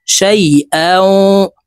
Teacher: তানউইনের পরে ইদগামে বা গুন্নার হরফ ওয়াও আসছে, তো এই হামজা ওয়ার সাথে গুন্নার সহিত মিলাইয়া পড়ব।